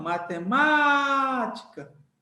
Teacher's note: matemática usando a técnica do grito você vê que o Má é o forte · Usando a técnica do grito, você vê que o ma é o forte, ou seja, então você tem a K como última, você tem a ti como penúltima e você tem a ma como antepenúltima, certo? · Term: sílaba forte